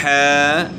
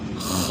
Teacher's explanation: اس کے بعد 2 حرفی ہے، ح، خ، ان کی ادائیگی جو ہے نا درست ادا کرنی ہے۔ ح گلے کے درمیان سے آپ کو گلے کے درمیان سے آپ نے ادا کرنا ہے، اور خ کو گلے کے شروع سے